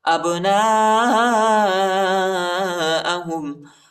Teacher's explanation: يعرفونه كما يعرفون أبناءهم، حمزہ کو با کے ساتھ ملائیں گے، با کو قلقلہ کی با کو جھٹکے کے ساتھ پڑھیں گے، قلقلہ کریں گے